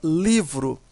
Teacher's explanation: A sílaba mais forte é li. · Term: sílaba tônica